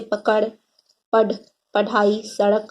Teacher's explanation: इनके उच्चारण में जीभ को ऊपर उठाकर आगे की ओर फेंका या उच्छिप्त किया जाता है, इसलिए इन्हें उच्छिप्त ध्वनियां कहा जाता है।